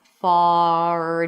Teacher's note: Notice that my lips are a little more rounded for the a sound.